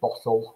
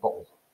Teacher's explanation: We're eliding the T phoneme in the middle of that word. That's elision.